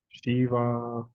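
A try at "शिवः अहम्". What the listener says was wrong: Shivaha. There is an a here, there is a visarga here, and there is an a here.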